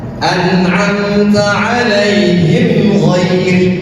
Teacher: Tetapi cara membacanya adalah idhar, zahir, jelas. Mimnya jelas dibaca dan tidak ditahan. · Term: idhar syafawi